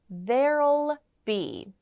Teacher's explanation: when we are saying there will be, we'll say there'll be, with an L sound at the end